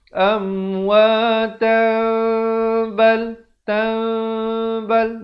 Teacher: Dia kena baca cara baca iqlab lah, iaitu bunyi tanwin ataupun nun ditukarkan kepada bunyi mim yang nipis, bibirnya hampir bersentuhan saja